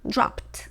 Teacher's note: No vibration, so that ed will be pronounced with a t.